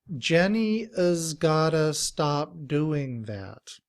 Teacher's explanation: instead of the ooh in two we say uh and we make ta and all together is gotta · has becomes us with the schwa which sounds like uh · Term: reduced form